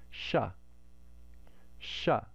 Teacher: we can't make a hissing sound in the guttural place, but we can do it in the palatal place. It makes sha, sha. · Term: palatal sibilant